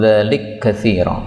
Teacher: kaf ketemu kaf dzalika katsira boleh idgham